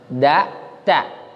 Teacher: Nah, ini mutajanisain karena sejenis, sama-sama makhrajnya sama di ujung lidah